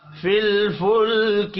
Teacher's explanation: دو لام ساکن ہے، دونوں پر قلقلہ نہیں ہوگا۔